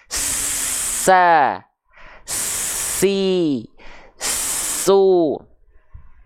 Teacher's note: Sin sifat suaranya mengalir sehingga nafasnya ngalirnya deras